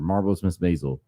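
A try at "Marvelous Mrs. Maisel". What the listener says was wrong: It sounds like you're saying Marvel's Miss Maisel.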